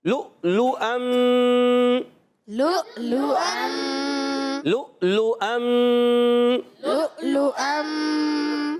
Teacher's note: لؤلؤم، اب یہاں پر لؤلؤم کہ پہلا لام کو حمزہ سے ملائیں گے، یہ واو نہیں پڑھیں گے، یہ حمزہ پڑھیں گے، اور حمزہ کو خوب جھٹکا دے کے پڑھیں گے، آواز آئے گی لؤلؤم، لؤلؤم۔